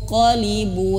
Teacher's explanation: nun sukun bertemu qaf itu suaranya dengungnya itu tebal pendapat sih ada yang berpendapat bunyinya tuh ke Eng tapi tebel